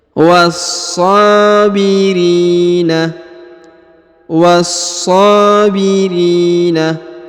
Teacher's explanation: huruf ri dibaca panjang 2 harokat karena di depannya terdapat ya sukun.